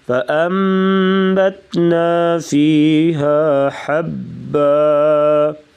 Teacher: یہاں پر اقلاب ہوگا یعنی نون کو میم سے بدل کر پڑھیں گے اور ساتھ غنہ کریں گے